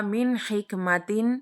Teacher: جب نون ساکن یا تنوین کے بعد حروف حلقی میں سے کوئی حرف آ جائے تو نون ساکن اور تنوین کو ظاہر کر کے، یعنی بغیر گننے کے، بغیر کھینچے، بغیر گننے کے واضح کر کے ادا کرنا ہوتا ہے۔ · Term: اظہار حلقی